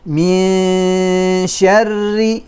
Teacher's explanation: Keep the position of the mouth on the sheen until the ghunna is complete.